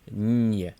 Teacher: But because you have that soft sign between the n and the y, you actually need to pronounce the complete soft consonant ny before you pronounce y